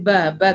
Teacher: Huruf ba huruf yang keluar dari dua bibir. Cara mengucapkannya adalah dengan menyentuhkan kedua bibir atas dan bawah.